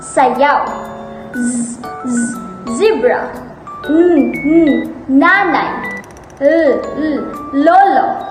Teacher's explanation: Panggilagid o alvular. Ang ibabaw ng dulong tila ay lumalapit o dumidikit sa punong gilagid.